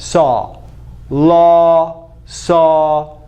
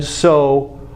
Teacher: saw bigger open more open than so or low